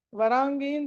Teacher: వర తర్వాత అనుస్వారం ఉంది తర్వాత గ ఉంది కాబట్టి పంచమా అక్షరం వరాంగీం అని పలకాలి